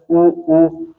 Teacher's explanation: दोनों ओठ कैसे गोल हो रहे हैं